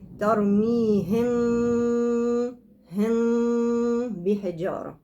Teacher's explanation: ترميهم ده أشبه بالنون. يبقى أنا لو تركت فرجة عند الإخفاء للميم هيشتبه مع الإخفاء للنون، نفس الصوت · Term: ترك فرجة بين الشفتين